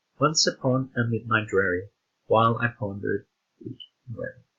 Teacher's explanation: You can clearly tell the 2 syllables in weary to be first stressed where and then unstressed we, to make a 2-syllable foot. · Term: trochaic octameter